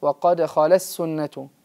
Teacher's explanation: كذلك هناك ملاحظة مهمة ينبغي علينا أن نعتني بها في تلاوتنا، وهي عند حرف التاء الساكنة، تاء التأنيث الساكنة عندما تلاقي حرف السين في مثل لا يؤمنون به وقد خلت سنة الأولين، ينبغي علينا أن نأتي بهمس التاء وبعد ذلك يكون مفصولا ولا ندغمه في حرف السين، يعني مثل وقد خلت سنة، بل علينا أن نعتني بإظهاره في أي موضع في مثل هذه الحالة.